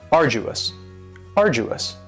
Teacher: three syllables and the stresses on the first syllable arduous now you don't hear that D sound that much it's not very strong · you don't hear that D sound that much. It's not very strong. It almost sounds a little like a J.